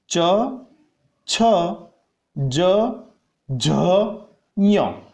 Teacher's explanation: च वर्ग जब बोलते हैं तब हमारी जिह्वा जो है वो तालु वाले भाग पर स्पर्श करती है।